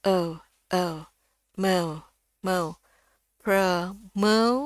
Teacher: kalau di Amerika itu O, kalau di sini E dengan U. Jadi E. Bukaan mulutnya juga lebih kecil.